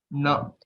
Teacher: for pronouncing Na, we'll have to roll up our tongue because it's a Murdhanya Akshara. Okay, it should point towards the head.